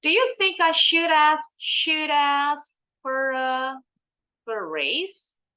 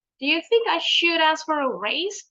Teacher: Intonasinya naiknya karena kalimat tanyanya bukan pakai WH question.